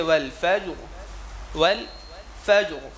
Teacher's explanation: فا کے اوپر زبر آ رہا ہے، را موٹا ہو جائے